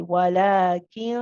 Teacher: your tongue shouldn't go to the place of noon you're getting ready for the next letter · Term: hiding the noon